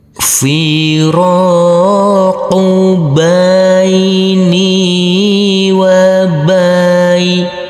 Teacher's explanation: Huruf ba yang berfathah a bertemu dengan huruf ya sukun, maka kita lembutkan karena ini adalah bacaan lin